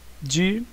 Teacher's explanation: É a antepenúltima sílaba mais forte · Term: proparoxítona